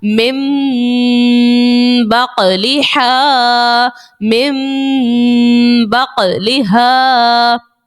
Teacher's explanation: next من بقلها، یہاں دیکھیے نون ساکن کے بعد حرف با آ گیا ہے، اقلاب کا قاعدہ یہاں سے شروع ہے، اقلاب کا قاعدہ لگا دیا اور نون ساکن کی آواز ہم نے نہیں نکالی، اس کی جگہ میم کو پڑھا